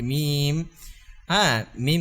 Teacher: মিম জের মিম বা দুই ঠোঁটের ভিজা অংশ থেকে উচ্চারণ হয় মিম দুই ঠোঁটের থেকে উচ্চারণ হয়